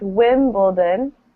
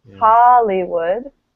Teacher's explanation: right the stress is at the beginning